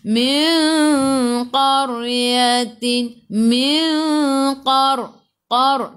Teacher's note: Qaqiqu tebal, isti'la huruf qaf. Huruf qaf huruf isti'la. Lidah naik ke atas. Min qaryatin, min qar tebal lidah naik ke atas.